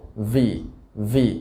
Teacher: ভি উচ্চারণের সময় উপরের দাঁত নিচে ঠোঁটের সাথে লেগে যাবে